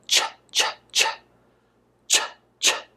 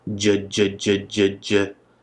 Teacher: ch is voiceless, which means we do not use our voice box, and j, j, j, j, j is voiced, which means we do use our voice box to say it. You'll feel your throat vibrating, j, j, j. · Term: affricates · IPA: tʃ and dʒ